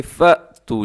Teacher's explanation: अक्सर लोग क्या करते हैं फ़ा तू पढ़ देते हैं, तो बल्कि फ़ा तू नहीं है बल्कि फ़ तू, झटके के साथ